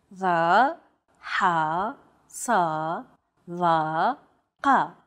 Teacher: These 5 sounds are known as emphatic consonants. They're categorized as such because they're pronounced deep within the throat.